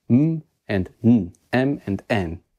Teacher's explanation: make that goes through your nose when the air comes out m and m and n these are nasal consonants they go through the nose